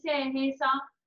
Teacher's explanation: जब वर्ण सा को उच्चारण करते हैं तब जीभ दांतों को स्पर्श करती है, इसलिए इसे दंतव्य सा कहते हैं।